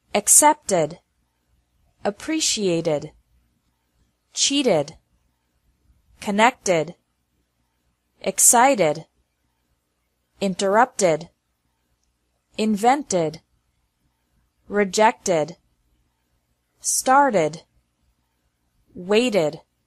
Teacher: the second pronunciation of Eed D is like e d with an extra syllable after verbs ending with a t or d sound